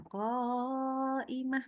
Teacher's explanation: ini omong-omong ko-nya itu nggak boleh cuma 2 harokat. Itu paling sedikit 4 harokat. Jadi panjang.